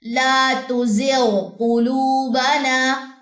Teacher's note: غین ادنی حلق سے ادا ہوتا ہے، اور قاف جو ہے اقصی لسان سے ادا ہوتا ہے. دونوں قریب المخرج ہیں، غین اور قاف قریب قریب ہی ہیں، لیکن ہم نے غین بھی پڑھنا ہے، قاف بھی پڑھنا ہے، ان کا ہم نے ادغام نہیں کرنا.